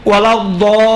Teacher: مد لازم ہے. یہاں پر 6 حرکت کے برابر میں کھینچنا جائز ہے